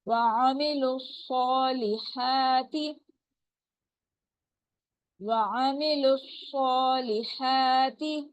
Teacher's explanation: لام کی پیش کو صاد کے ساتھ ہم ملا رہے ہیں، بیچ میں واو الف الف لام یہ ہم نہیں پڑھے ہیں. نو سائن نو ساؤنڈ، کوئی حرکت نہیں ہے، کوئی آواز نہیں ہے، ٹھیک ہے.